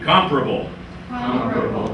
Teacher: Notice the stress on the first syllable, please.